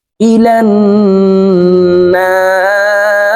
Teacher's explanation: র জের রি ইলান নারি রকে ওয়াকফের ক্ষেত্রে সাকিন করে ফেলবো এখানে না তিন আলিফ টেনে রকে সাকিন করতে হবে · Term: মধ্যে আরজি